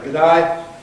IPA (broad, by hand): gəˈdʌɪ